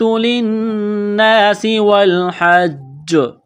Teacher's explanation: جیم زیر جی، حجی، تشدید کی وجہ سے اس جیم میں سختی کریں گے، دبائیں گے، اور یہاں پر جب وقف کریں گے تو جیم پر قلقلہ کریں گے